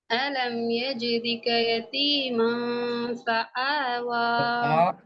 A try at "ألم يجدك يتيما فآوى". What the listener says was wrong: இந்த தொண்டையிட கீழே கொண்டு போக தேவையில்ல, மேலுக்கு வச்சு கொள்ளுங்க. தொண்டையிட மேல் பகுதினா சவுண்ட் வரணும். அதாவது நீங்க ஆண்டு உச்சரிக்கிற இடம் இதான, தொண்டையால் உச்சரிக்கப்படக்கூடிய இடம், அந்த இடம் தான் ஏண்டு மாறணும். இடத்த மாத்த தேவையில்லை, வாயினுடைய டிசைன் தான், வடிவத்தை தான் மாத்தணும். நீங்க ஆண்டு உச்சரிக்கிற மாற்ற நேரம் நீ என்ன செய்றீங்க என்றால், உச்சரிக்கப்பட்ட பிளேஸ் இடத்தையே மாத்துறீங்க.